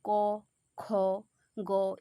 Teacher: এই ক, খ, গ এগুলো একদম জিভের শেষ ভাগে উচ্চারিত হচ্ছে, এই অর্থাৎ কণ্ঠে। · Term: কণ্ঠবর্ণ